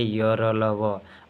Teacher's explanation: अल्पप्राण। यानी बोलने में कम हवा निकलेगी